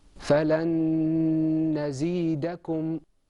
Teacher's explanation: In idgham, there's a lengthening of your voice, and I think you can hear it. There's a slight humming sound. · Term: ghunna